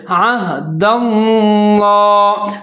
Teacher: عین کو موٹا پڑھنا ہے، آگے ہا موٹے والا ہے، اس کو عین کے ساتھ ملانا ہے کیونکہ اس کے اوپر ساکن ہے